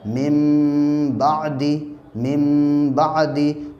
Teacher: नून साकिन के बाद बा आ रहा है, इसकी वजह से यहाँ पे हम नून को मीम से बदल कर पढ़ेंगे